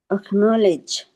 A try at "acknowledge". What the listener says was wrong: লেজ না লিজ অ্যাকনলেজ